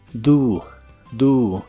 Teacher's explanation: La O se pronuncia como una U.